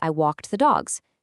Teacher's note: If you say, "I walked the dogs," the AI has to know that the sharp T sound it heard actually maps to the past tense ed morpheme, and the buzzing Z sound maps to the plural S